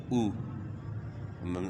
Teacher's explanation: اور حمزہ پیش او، حمزہ میں پیش ہون، یعنی حمزہ کے اندر جو ہے نا ہم نے جو اس کے اوپر پیش ہے تو اس میں ہونٹ گول ہوں گے. تو پیش جو ہے نا آدھے واؤ کی آواز ہے.